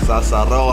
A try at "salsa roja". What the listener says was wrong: You gotta roll the R. Roja. Salsa roja.